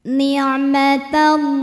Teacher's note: Alif lamnya dinamakan dengan alif lam syamsiyah karena alif lam menghadapi huruf syamsiyah yaitu lam, maka alif lam tidak kita baca atau diidghamkan · Ma matobi'i muqaddar karena ada baris fathah panjang di atas huruf lam. Cara bacanya panjang 2 harokat.